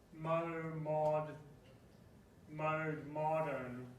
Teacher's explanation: So it's flipping back and forth between a long O and a short O.